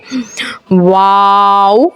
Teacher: दोनों होठों की गोलाई से अदा होता है